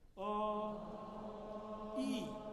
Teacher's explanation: What happens to the back of your tongue when you move from ah to E? Forward and up.